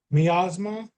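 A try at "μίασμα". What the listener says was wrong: Good. Yes, miasma.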